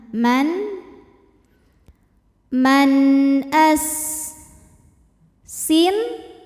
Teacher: jadi bunyinya n ya dan tidak perlu kita tahan